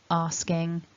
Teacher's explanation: Asking, don't forget to have the vibration up in the nose area for your ing, asking. And with your asks, third person, sks at the end. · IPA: /ŋ/